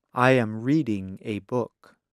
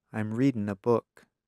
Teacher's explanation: in fast speech many Americans do not pronounce the G at the end of the verb